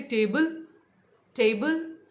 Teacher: तो I am stressing more on टे, right? तो आप देखिए टी A is a separate syllable, बी L E is a separate syllable.